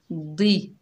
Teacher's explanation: अर, फिल अर, द्वात के नीचे ज़ेर है, बगैर खींचे पढ़ेंगे। दी, द्वात जो है मोटा हरूफ हुरूफ मुस्ताला में से है, तो इसकी आवाज़ दाल की तरह नहीं आनी